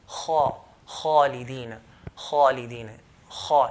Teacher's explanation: The Arabs used to pronounce kha with heaviness by elevating the back of the tongue. Kha, khalidina, kha instead of khalidina.